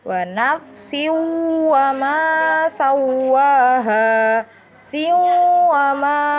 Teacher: Idgham bi gunnah yaitu masuk dengan dengung